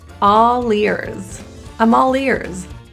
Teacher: Here we have a consonant, all, the L, and a vowel coming up, so we can transition that L to the next word. Think of it instead of ears as leers.